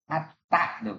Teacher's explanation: Ta itu hanya melibatkan ujungnya lidah saja. Tak, ujung lidah di gigi.